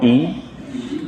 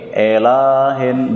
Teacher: I hamzah kasrah dibaca dari tenggorokan paling bawah ya